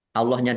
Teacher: Allahnya dibaca tebal karena harakat di depannya fathah lam fathah berdiri mad thobi'i yatubu tak dumah Wau sukun juga mad thobi'i panjang dua harakat.